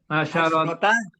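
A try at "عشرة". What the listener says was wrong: Asrota. Bukan asrota. Asrota. Jadi pakai sukun. Sinnya.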